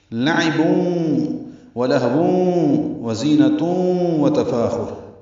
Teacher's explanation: لعب ولہو وزینۃ وتفاخر، یہ تینوں میں لعبون ادغام ناقص مع الغنہ ہے، تنوین کے بعد واو آنے کی وجہ سے